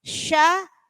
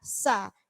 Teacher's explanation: Lah, ini ketemu antara shin dengan sin. Sya itu tebal, hembusan nafasnya banyak, sin tipis. Sya sa. Jadi enggak pakai sh gitu enggak pakai mencucu sya, cukup sya sa.